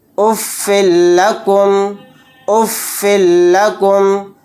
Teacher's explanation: رزقا لکم، رزقا لکم، اف لکم، اف لکم، فا کے نیچے دو زیر ہیں یعنی تنوین، تنوین کے بعد لام آ گیا تو یہاں پر بھی ادغام بلا غنہ کا قاعدہ ہوگا، یعنی یہاں پر بھی غنہ نہیں کریں گے، فا کو لام کے ساتھ ملا کر جلد اس طرح سے پڑھیں گے